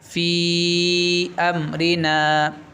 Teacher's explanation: تو مد منفصل اس کو 3 الف کے برابر کھینچنا. آپ اس سے زائد بھی کھینچ سکتے، 2 بھی کھینچ سکتے، آپ 3 کھینچیے.